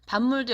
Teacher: 밥물도 역시 미음 때문에 밥이 미음으로 바뀐다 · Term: 비음화